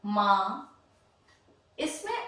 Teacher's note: इसमें अंतर क्या है देखिएगा। माँ, इसमें हम मुंह और नाक दोनों से ध्वनि करते हैं। नाक में थोड़ा सा ध्वनि जाती है और मुंह पूरा खुलता है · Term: अनुनासिक